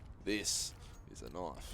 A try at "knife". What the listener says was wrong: It's actually, there's an O in there.